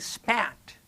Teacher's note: If you are saying spat and you put your hand there, you will feel much less of that air hitting your hand. There's actually much less of the uh that you know burst that you get.